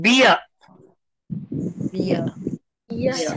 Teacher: Don't say beer. Don't say beer because R is not spoken at the end.